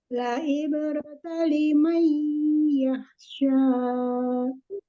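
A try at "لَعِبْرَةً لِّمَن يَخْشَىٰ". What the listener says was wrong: Tasdid jangan terlalu lepas juga, Umi, walaupun tidak ditahan ya bila kunnahnya. La ibratan liman yakhsha. Tetap ditasdidkan.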